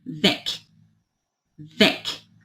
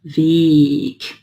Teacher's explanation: E aberto, e curto.